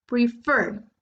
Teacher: Lo más fuerte está en fer. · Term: Stress